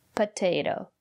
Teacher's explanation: the first letter T is pronounced as T because the syllable after the letter T is stressed